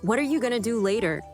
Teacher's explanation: What are you becomes what are ya? Going to becomes gonna. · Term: connected speech